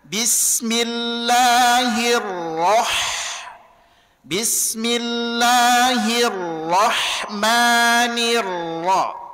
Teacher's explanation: Maka ro-nya ngambek, ha-nya senyum.